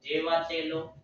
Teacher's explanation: la sílaba tónica está antes de la antepenúltima sílaba